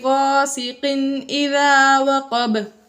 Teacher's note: غَاسِقٍ إِذَا وَقَبَ، وقب میں بھی قاف حروف قلقلہ میں سے ہے، وقف کی وجہ سے ساکن ہو گیا، اس لیے یہاں پر ہم نے قلقلہ ظاہر کر کے پڑھا